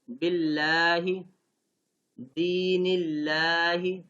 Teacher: لام جلالہ سے پہلے اگر زیر آ جائے تو پھر اس کو باریک یعنی نرمی سے پڑھیں گے